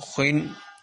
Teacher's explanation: ہر حالت میں موٹا یعنی پر کر کے پڑھا جائے گا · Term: حروف مستعلیہ